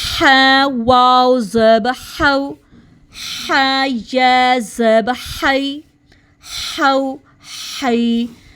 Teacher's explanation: اب ہم ہا کو مڈل تھروٹ سے ادا کریں گے